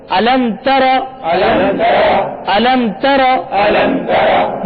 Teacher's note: عالم تارا، اس میں غنہ نہیں کریں گے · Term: اظہار شفوی